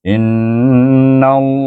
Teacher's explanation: lam jalalah di baca dengan tebal